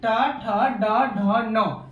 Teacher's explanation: जिसका उच्चारण मूर्धा से हो उसे मूर्धन्य कहेंगे